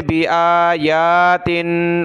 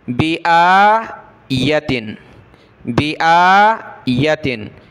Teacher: حالانکہ یا پر زبر ہے، یا کو آپ نے کھینچنا نہیں ہے، حمزہ کے اوپر یہ کھڑا زبر ہے، اس کو آپ نے کھینچنا ہے۔